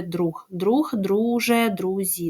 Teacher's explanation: Зверніть увагу на чергування в слові друг друг друже друзі да ГЖЗ